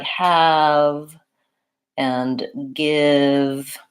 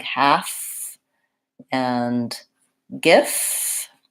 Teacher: So words like have and give might accidentally sound like half and gif. And you really do want to have voicing on that V in all of those cases. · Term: voiced sound, V sound